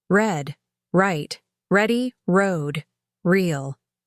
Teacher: The American R is strong, deep, and made with the tongue pulled back. It's not the soft R I was used to.